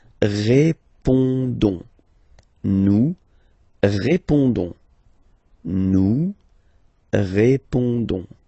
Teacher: don't pronounce the final S, you only pronounce this ON sound